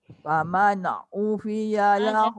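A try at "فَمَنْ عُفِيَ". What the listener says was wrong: Jangan faman. Jangan kuat sangat tu. Faman'u fiya lahu.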